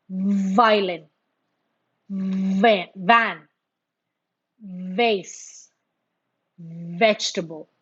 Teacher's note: a slight vibration, a treble of the lower lip when you say that.